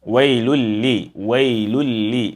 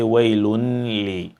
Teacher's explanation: Whenever you have that and you have next to it lam, whether it's fatha or kasra or dhamma, you have to merge between them, and that hidden silent noon has to merge into or disappear in the lam, and that is why the second lam has a symbol of emphasis.